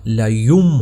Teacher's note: اس کی کیا وجہ ہے کہ جب بھی نون ساکن یا تنوین یعنی دو زبر دو زیر دو پیش کے بعد حرف با آئے گا، حرف با، یہ آپ نے ذہن نشین کرنا ہے، تو وہاں پر یہ جو نون ساکن اور وہ تنوین کی جو آواز ہوتی ہے نا، ان ان ان والی، اس کو ہم میم میں تبدیل کر دیتے ہیں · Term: اقلاب